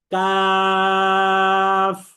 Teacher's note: জিহ্বার গোড়া থেকে আরেকটু সামনে বেড়ে তার বরাবর যে উপরের তালু আছে, এই তালুর সাথে লাগিয়ে দিতে হবে